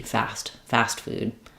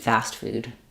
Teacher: Fast food sounds wrong. So either light T, unreleased T, or very, very short S with no T are your choices for fast food.